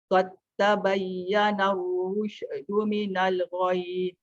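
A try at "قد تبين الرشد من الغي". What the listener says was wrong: Rush tu jangan rush. Qad tabayyana ar-rusydu minal ghayy.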